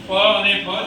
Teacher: આપણે બંને હોઠ એકબીજાનો સ્પર્શ કરીને હવાને રોકે છે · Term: ઓઠ